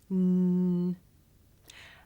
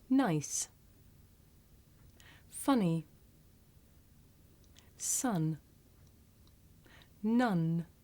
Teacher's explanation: In English, we make this sound with the tongue behind the teeth. N. And when you make this sound, you should be able to feel a vibration in your nose.